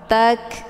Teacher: Ini huruf kaf sukun, cara bacanya ditekan kemudian dialirkan dengan desis angin yang agak samar-samar. Tak, ya, ada bunyi anginnya karena kaf ini bagian daripada sifat hamas.